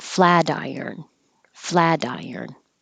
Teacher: iron it connects together the T changes to a d